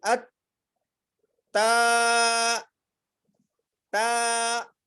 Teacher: اور یہ تا جو ہوگی باریک پڑھی جائے گی، اس کو تو نہیں پڑھیں گے،